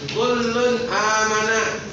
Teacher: cara membacanya nun mati atau tanwin jelas dan terang tanpa disertai dengung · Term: izhar